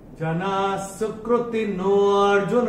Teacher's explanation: नो को जो है ये हम थोड़ा सा खींच के बोलेंगे। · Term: अवग्रह